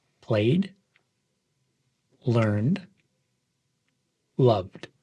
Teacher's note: notice how this D sound is a bit softer and blends smoothly with the verb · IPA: /d/